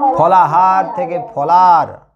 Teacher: আর ফলাহার থেকে ফলার হ লোপ পাচ্ছে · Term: ব্যঞ্জন লোপ